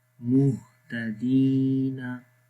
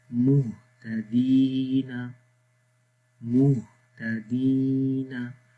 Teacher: دال کو بھی لمبا کریں گے کیونکہ جب یا کے اوپر جزم ہوتی ہے اور اس سے پہلے زیر ہو تو لمبا کرتے ہیں